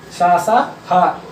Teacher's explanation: सा, सा, हा, ये आपके महाप्राण में आएंगे, क्योंकि इनको बोलने पर ज्यादा वायु निकल रही है